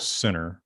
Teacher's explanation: intervocalic nt the t drops